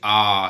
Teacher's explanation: मुख आकृति के आधार पर चार होते हैं विवृत स्वर आ सबसे अधिक मुंह खुलता है